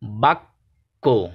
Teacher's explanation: বাক্য, এখানে বাক আবার কো, এই দুইবার উচ্চারিত হচ্ছে বয়ের সাথে। কয়ের সাথে জফলা যুক্ত থাকায় ক দুইবার উচ্চারিত হচ্ছে।